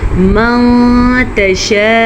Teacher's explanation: نون ساکن کے بعد تا حروف اخفا میں سے ہے تو ہم نون ساکن کو چھپے ہوئے غنے کے ساتھ پڑھیں گے۔ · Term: اخفا کا قاعدہ